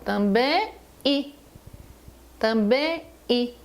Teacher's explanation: Quando você fala também I, eu tenho um ditongo, que é formado pelo som nasal em, que é o E, e o I